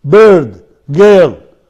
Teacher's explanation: It is the center. Center, between half closed and half open. It is long, it is unrounded.